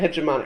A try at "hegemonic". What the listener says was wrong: That's because you're thinking of hegemony and then just changing it to an IC. But changing the Y to an IC changes the entire pronunciation and makes it hegemonic.